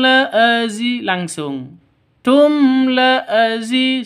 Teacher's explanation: mim mati bertemu dengan lam ini jelas, terang, tidak boleh dengung, tidak boleh panjang. Tum la azi, itu salah.